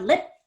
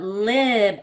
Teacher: lip, I would say pretty quickly, but lib, I want to spend more time on that vowel